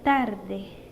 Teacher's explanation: Dental. Lo podemos producir poniendo la lengua detrás de los dientes superiores, en caso de la T y la D.